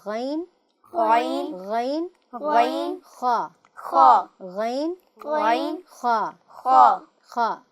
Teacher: غین، خا یہ اوپر والے حلق سے ادا ہوتے ہیں۔ جب ہم اس کی ادائیگی کریں گے تو غین اور خا آپ کے حلق کے اوپر والے حصے سے ادا ہوں گے۔